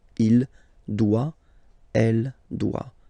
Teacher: Final T not pronounced. Il doit, elle doit.